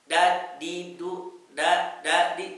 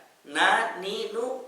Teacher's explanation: Kalau mengucapkan huruf nun ini tanpa melibatkan khayshum, dia bunyinya jadi huruf D kita. Da, di, du, da, di, tidak bisa.